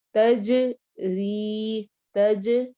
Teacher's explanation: جیم پہ قلقلہ کرنا ہے، آواز ہماری ایکو ساؤنڈ ہوگی